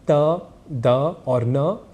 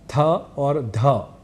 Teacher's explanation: यहां अल्पप्राण है त द और न ये तीन अक्षर और यही थ और ध ये दो अक्षर महाप्राण इस नाम से जाने जाते हैं